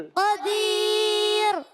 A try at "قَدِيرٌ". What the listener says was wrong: را پورا آواز آ رہی ہے، پور نہیں باریک کرنا ہے. قدیر. زبان کو سیدھا رکھ کے لگائیں گے تو باریک ایسے کریں گے تھوڑا اوپر کی طرف پور ہو جائے گی. پور نہیں کرنا. قدیر.